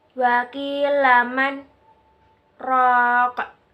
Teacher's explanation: sakta, yaitu berhenti sejenak tanpa bernafas kira-kira 2 harokat atau 2 ketukan.